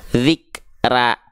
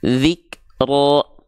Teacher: Jadi huruf ro itu ketika berharakat fathah harus dibaca dengan keadaan yang tebal